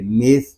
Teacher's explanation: سا کو نرمی کے ساتھ پڑھیں گے، اس میں سیٹی کی آواز نہیں آنی چاہیے